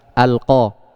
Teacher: Nah, tinggal dikasih alif lam al-qamariyah. Oh, berarti idhar karena lamnya dibaca jelas. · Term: lam qamariyah